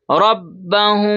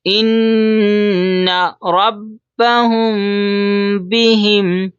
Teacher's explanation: یہاں پر اخفا کرتے ہیں. جیسے ربهم، تھوڑی دیر آواز کو ناک میں چھپائیں گے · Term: اخفا میم ساکن